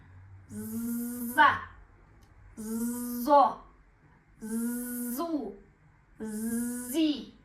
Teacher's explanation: З деген кезде біздің тамағымыз дірілдейтін болады. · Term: з дыбысы